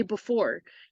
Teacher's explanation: four actually stretches out you can hear if you say before you can physically hear that the or stretches on longer than that first part